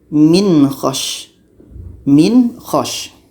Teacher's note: jadi tidak ada dengung nun mati harus jelas Ho pun harus jelas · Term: izhar halqi